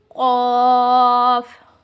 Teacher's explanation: قاف یہ جو ہے حرف حلقی میں سے آتے ہیں، تو اس کو چاہیے کہ حلق سے ہی نکالیں. اور جو ہے یہ حرف مستعلیہ میں بھی آتا ہے، تو اسے پر بھی پڑھنا چاہیے.